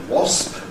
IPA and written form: wɒsp (wasp)